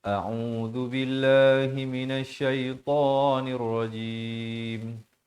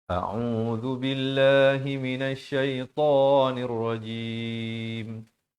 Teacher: Hamzah dan ain berikan perbezaan. Hamzah di pangkal kerongkong, ain di pertengahan kerongkong.